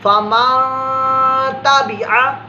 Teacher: کچھ تو یہ اخفا کر رہا ہے، خفیہ پوشیدہ اپنی بات کو چھپا رہا ہے. ہم نے یہاں بھی نون کو ظاہر نہیں کرنا، اپنی بات کو چھپانا ہے، چھپا کر ادا کرنا ہے نون کو